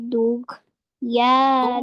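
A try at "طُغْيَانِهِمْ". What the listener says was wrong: Di situ hurufnya to. Tughyanihim.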